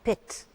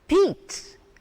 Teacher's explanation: When you said this word, this sound in pit, the sound was short, pit. But when you say peat, the sound, E sound is lengthened.